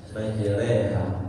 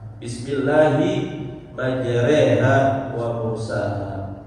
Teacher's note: Imalah itu artinya memiringkan bunyi fathah ya. Bunyi fathah tapi tidak mengurangkan harakatnya.